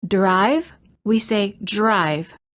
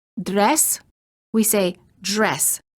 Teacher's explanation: D plus R sounds almost like dr sound. When the D is followed by an R, the D changes and becomes an almost j. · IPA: /dʒr/